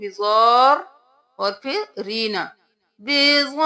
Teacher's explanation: مد کو 5 الف کے برابر کھینچیں گے، رو کو 2 بار ادا کریں گے